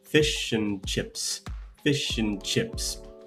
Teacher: It might sound quite subtle, but the first syllable has a weak stress. The and is incredibly weak, and the chips is quite strong. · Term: stress pattern